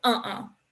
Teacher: you can feel like that you are stopping the air in your throat in order to make that little stop sound in the middle that's called a glottal stop there's a ton of them in